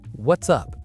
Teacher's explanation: Notice how what's blends together. It's not what is up.